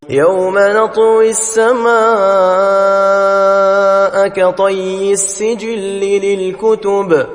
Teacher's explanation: قطعی یہاں پھر حرف تا ہے، جس کی صفات استعال اور اتباق ادا ہوں گی، یعنی تا کو خوب موٹا اور بھرپور پڑھیں گے۔ یا مشدد ہے، زور سے پڑھی جائے گی۔